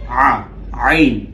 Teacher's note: আইন, প্রথমে হচ্ছে মুখে আপনি গলায় হাত দিলে বুঝতে পারবেন যে আপনি যখন আইন বলছেন আপনার গলা কম্পন করছে